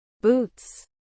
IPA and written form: buːts (boots)